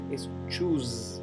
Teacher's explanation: choose lo pronuncio con la S zumbada, no es choose, es choose, ¿bien?